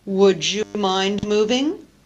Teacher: d plus y produces the new sound through the process of coalescent assimilation of j